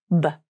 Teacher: The B consonant is a voiced consonant. This means the vocal cords are turned on as you say this sound. And you should feel a vibration in the throat when you say it. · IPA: /b/